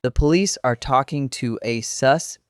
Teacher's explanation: You just said suspect with the stress on the second syllable